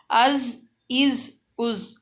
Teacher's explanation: زال کو ہم نے دونوں دانتوں کے درمیان میں زبان رکھ کر پڑھنا ہے کہ ہم نے اس کی ز نہیں نکالنی، ہم نے اس کو سا کی طرح پڑھنا ہے۔